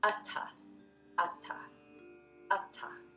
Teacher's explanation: Both A's are the sound, and the TH is not a th, but a t. A little extra air comes out after the T sound.